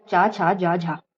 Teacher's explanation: चा छ जा झा जो है वो स्पर्श संघर्षी ध्वनियां कहलाती है